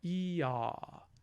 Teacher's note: the highest point of the tongue is going down, and it's also going back